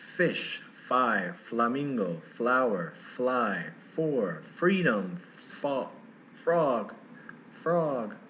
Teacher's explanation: sound it's just there's no shaking so basically it's like a it's like a v it's just not so tight on your teeth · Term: f sound